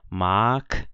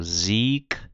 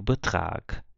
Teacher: G em final de palavra ou final de sílaba a gente lê como se fosse um k